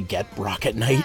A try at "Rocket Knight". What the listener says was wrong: You said it with a weird inflection on the R, so it kind of sounded like a B, but you did say rocket.